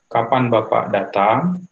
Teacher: yang interrogatif tentu menaik di ujung